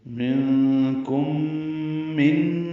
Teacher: میم ساکن کے بعد میم آنے کی وجہ سے ادغام ہے، غنہ ہوگا · منکم میں نون ساکن کے بعد کاف آنے کی وجہ سے اخفا ہے اور میم ساکن کے بعد میم آنے کی وجہ سے ادغام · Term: ادغام شفوی